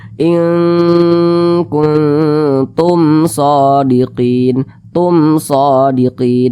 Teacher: bukan huruf ba di depannya bukan huruf mim berarti izhar syafawi karena dia izhar maka bacanya itu jelas tidak berdengung tidak dipanjangkan jadi dibaca inktum shodiqin nah dibaca pendek seperti itu jelas jangan